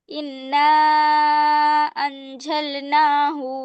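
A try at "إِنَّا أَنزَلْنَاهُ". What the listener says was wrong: ইন গুণনা করা হচ্ছে না আপু, এখানে একটা জের আসে, বুঝছো? জের। ইন্না, ইন্না আনজালনাহু, আবার বলো।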